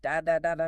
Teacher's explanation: Spanish or French, for example, are syllable-timed. Each syllable takes up roughly the exact same amount of time, giving it a very steady, machine gun-like rhythm.